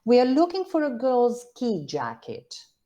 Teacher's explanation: we are looking for a girl ski jacket um i think there's a nucleus in ski which is a fall jacket that's a compound right ski jacket and then we have